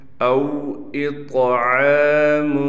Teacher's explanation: او اطعام، یہاں پر طا پر قلقلہ بھی کیا جائے گا اور طا کو موٹا بھی پڑھا جائے گا۔ عین پر کڑا زبر ہونے کی وجہ سے عین کو ایک الف کی مقدار کھینچیں گے۔